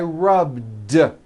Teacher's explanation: All I did was add a voiced D sound at the end. Rubbed. It's not rubbed with an unvoiced T.